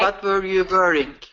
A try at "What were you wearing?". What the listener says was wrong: Okay, so here's what I'm hearing is that W, what you're wanting, your mouth is wanting to do is a V sound. V sound. Okay, so instead of wah wah wah with the lips rounded like this, wah wah wah. What your mouth is doing is va va va, va va va, with your teeth hitting your bottom lip, va va va. So your mouth's wanting saying what were you wearing, okay?